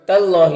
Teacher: اللہ کے لام سے پہلے تا کے اوپر زبر ہے تو اللہ کے لام کو پر پڑھیں گے، کھڑا زبر ہے، ایک الف کے برابر کھینچیں گے۔